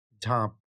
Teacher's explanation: ম প যুক্ত ছিল। ম ধ্বনিটি নাসিক্য ব্যঞ্জন ধ্বনি, ম ধ্বনিটি লোপ পেয়ে যাচ্ছে এবং আগের স্বরধ্বনিকে অনুনাসিক করে তৈরি করে দিচ্ছে ঝাঁপ।